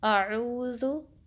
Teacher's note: जो हमज़ा के निकलने की जगह है वो अक्सल हल्क है, deepest part of the throat